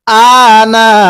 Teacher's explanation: নুনের মধ্যে 4 আলিফ টান দিব